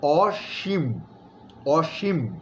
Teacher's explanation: অসীম শব্দটা বলতে গিয়ে আমরা দন্ত স লিখছি, কিন্তু উচ্চারণ করার সময় এটার শব্দের গুরুত্ববহতা, মানে অসীম, যার কোনো সীমা নাই, হ্যাঁ, সীমা পরিসীমা নাই, ওইটার গুরুত্ববহতাটা তৈরি করার জন্য আমরা কিন্তু উচ্চারণের সময় দন্ত সকে আমরা তালব্য স হিসেবে উচ্চারণ করছি, তাহলে এটা হবে অসীম, অসীম, এবং ময়ের মধ্যে একটা ছোট্ট ধাক্কা আছে, অসীম।